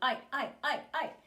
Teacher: this noise that you're hearing is made because the vocal cords are closed they have this backup of the air pressure and there's a big buildup and they pop apart and they close again and that makes a noise um even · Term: glottal onsets